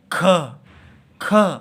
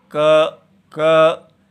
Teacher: आप देखिए क को बोल के क लेकिन ख बोलिए ख तो हम देखते हैं कितनी वायु आ रही है तो क अल्पप्राण है